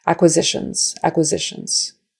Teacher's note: the N right before that final S is a voiced consonant, right? You can feel your neck vibrating. So that makes that final S turn into a voiced S, which is a Z. · And the S on the end, again, pronounced like a Z.